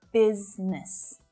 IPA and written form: 'biz nəs (BUSINESS)